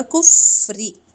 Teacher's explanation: کف فا پہ ہمس جاری ہوگا